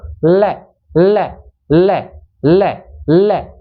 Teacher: है ना वो अपने मसूड़े को छुए गी ल ल और हवा दोनों साइड से जीवा के दोनों साइड से जो जगह बनती है ना उसके द्वारा बाहर निकलती है